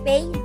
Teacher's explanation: This is one of the simplest points of articulation and happens or occurs when we constrict or block the airflow coming from the inside towards the opening of the mouth by both our lips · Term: bilabial